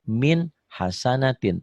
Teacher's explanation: Ditulisnya min hasanatin, dibacanya juga min hasanatin tanpa ditahan, tanpa dengung. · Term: idhar